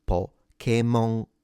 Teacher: So Pokémon, the pitch accent is a low to high. Pokémon. And notice that the N at the end is fully nasalized.